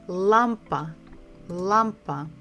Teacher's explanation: We stress the first syllable.